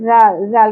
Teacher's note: زال کو نرمی سے ادا کریں گے، سیٹی کی آواز اور بزنگ ساؤنڈ نہیں ہونی چاہیے